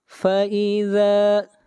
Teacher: ذال کو کھینچ کر پڑھیں گے ایک الف کے برابر، مد اصلی ہے